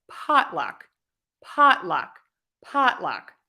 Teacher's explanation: Stress pot, and then luck is unstressed, so that's shorter. Pot is longer, luck is shorter. Pot is louder, luck is softer. Pot is higher, luck is lower.